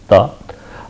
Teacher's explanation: Again ta is unvoiced stop, right. So, therefore, because of that you have a silence followed by burst.